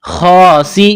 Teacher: خا کو ایک الف کے برابر کھینچنا ہے